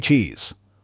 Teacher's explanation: The long e sound in cheese pulls your lips back into a wide, toothbearing grin.